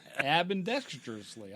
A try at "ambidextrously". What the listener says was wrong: you're adding something there. Ambidextrously. You were adding about 3 syllables out of nowhere in that thing.